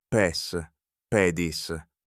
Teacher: Its vowel is long in the nominative singular and short in every other case.